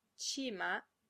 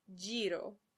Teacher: ch and j are in fact actually combinations of 2 distinct sounds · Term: affricates